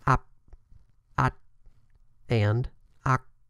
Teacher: However, the PTK stops have no audible release after the stop. This means that once the airflow is stopped, an additional sound should not be produced after the stop.